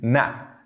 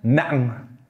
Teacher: you kind of re-release the air and pronounce the ending sound again after the glottal stop.